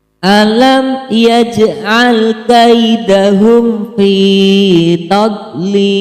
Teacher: Mad lin karena huruf ya sukun didahului oleh huruf kaf berharokat fathah. Cara membacanya adalah dibaca panjang 2 harokat.